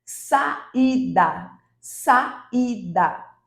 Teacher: observem que o i ele tem tanta força quanto a · Observem que o I, ele tem tanta força quanto o A. Então, nesse caso, nós temos duas vogais. E aí, como são duas vogais, eles ficam obrigatoriamente em sílabas diferentes.